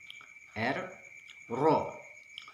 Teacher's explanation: Ra seperti huruf R dalam bahasa Indonesia, namun ada sedikit getaran. R, Ra. Ujung lidah menempel pada langit-langit depan atas. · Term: huruf Ra